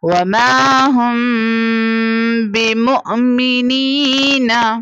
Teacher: اور یہاں پر میم ساکنہ کے بعد با لیٹر ہے، سو یہاں پر ہم اخفاء شفوی کریں گے یعنی غنہ کر کے پڑھیں گے